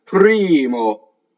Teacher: You've heard that a lot. So you want, again, to elongate the I and don't have any phonation when your lips come together for the M